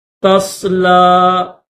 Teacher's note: عاملۃ ناصبہ، تصلا، تصلا، لام کے ساتھ یہ یا لگی ہوئی تو یہ یا نہیں پڑھی جائے گی، لام کھڑا زبر لا، لام کے اوپر کھڑا زبر 1 الف کی لمٹ میں کھینچیں گے۔